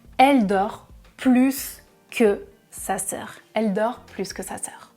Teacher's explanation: je prononce le S à la fin du mot plus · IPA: [plys]